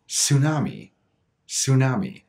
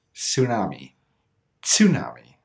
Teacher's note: After 2011, the word tsunami entered many different languages, including English, but most native speakers will just pronounce it tsunami, tsunami, and completely cut the affricate sound and just make it that sibilant sound, that S, tsunami, tsunami.